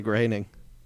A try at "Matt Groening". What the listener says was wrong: Groening? There's no A in it. Groening. Well, probably Matt Groening, I would guess, would be the logical one, but I don't know. Groening.